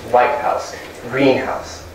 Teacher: Notice the first part has more stress than the second part. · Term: Compound stress